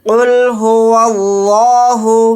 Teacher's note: لفظ اللہ کے لام سے پہلے زبر ہے، تو لفظ اللہ کے لام کو موٹا یعنی پر پڑھیں گے